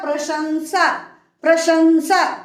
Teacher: तालव्य स का उच्चारण श होता है क्योंकि हमको जिह्वा को ले जाकर के तालु को स्पर्श करना है